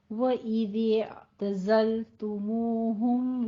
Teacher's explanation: دال نرمی سے اور زائے سیٹی کی تھوڑی آواز آئے گی